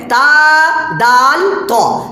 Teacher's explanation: تا، دال، طا زبان کی نوک اور ثنایا علیہ کی جڑ مل کر ادا ہوتا ہے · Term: مخرج